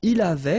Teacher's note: final T not pronounced, so the same form, okay?